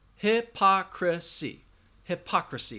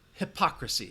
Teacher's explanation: Hypocrisy has 4 syllables. Hypocrisy. Hypocrisy. That schwa is in that 3rd syllable.